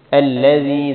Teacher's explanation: زال کو نرمی سے پڑھیں گے، یا پر مد ہے اس کو تھوڑا سا لمبا کریں گے